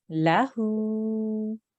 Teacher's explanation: Now here we have a lam with a fatha, and then we have a ha with an inverted dhamma. So the lam will be for 1 second, but the ha will be for 2 seconds.